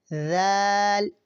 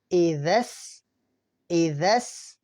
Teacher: ہماری زبان کی نوک سامنے والے دانتوں سے تھوڑی سی باہر رہے گی تو ذال ادا ہوگا